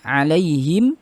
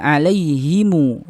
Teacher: membaca dengan dua wajah, pertama dengan sukun ya, kemudian kedua dengan silah. Jadi kalau misalnya dalam surat Al-Fatihah, Imam Qalun ini membacanya alaihim, bisa juga alaihimu. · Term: mim jama'